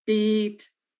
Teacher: My muscles are tense. The vowel is longer. My tongue is gliding, and the tenseness produces a smile, the smiley sound. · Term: high front tense